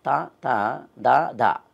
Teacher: త ద అన్నప్పుడు నా నాలుకని దంతాన్ని తగులుతాం కాబట్టి దంత్యాలు అన్నారు · తాత దాదా అనే 4 అక్షరాలు పలికినప్పుడు తాని నాలుకని పైన దంతాలని తన్ని తెస్తాం. తా తా దా దా అన్నప్పుడు నాలుకని దంతాన్ని తగులుతాం కాబట్టి దంత్యాలు అన్నారు వాటిని.